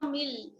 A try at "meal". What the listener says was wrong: Meal. See, that's the thing, you have to work on your pronunciation. It's not mill, it's meal, meal. Meal, meal, meal. not mill. Meal, meal.